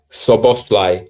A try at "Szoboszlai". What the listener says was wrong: No. You said Bosch. No. Szoboszlai. Like a fox is sly. Okay, sly.